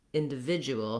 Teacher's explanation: Individual is, again, stressed on the vid syllable.